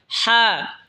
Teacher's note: হা হলকের মধ্যখান হয়তো উচ্চারণ হবে হা।